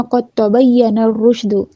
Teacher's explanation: اگر ہم یہاں پہ وقف کرتے ہیں قد تبین الرشد، یا کے اوپر شد ہے، نبر کا قاعدہ ہوگا، شین کی آواز کو اچھے سے پھیلائیں گے، دال کے اوپر پیش ہے اس کو جلدی سے ادا کریں گے